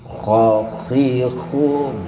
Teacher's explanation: Kalau kha sedikit mendengkur, ya, tidak terlalu banyak mendengkurnya, tidak, tidak, sedikit mendengkur saja.